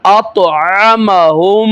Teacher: کلکلا کرنا ہے، موٹا بھی کرنا ہے، آواز کے اندر لہر پیدا ہوگی